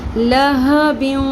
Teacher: آواز کو ناک میں تھوڑی دیر ٹھہرانا. لہبیوں یعنی کہ ہم نے بیوں بھی پڑھنا ہے اور اس کو ٹھہرانا بھی ہے. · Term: ادغام مع الغنہ